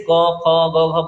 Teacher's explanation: कंठ ध्वनियां कौन सी होती है दोस्तों जो कंठ के पास से आती है जैसे क ख ग घ बोलते हैं तो ये कंठ के